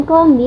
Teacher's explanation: varian klambi memperlihatkan gugus konsonan KL yang jarang dalam bahasa Indonesia